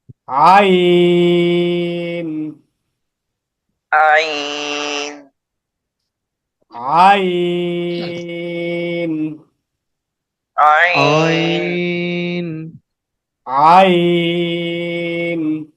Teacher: আইন হায়ের মতো করে, অর্থাৎ কণ্ঠনালীর মাঝখান থেকে। আইন হা, তিন আলিফ টান।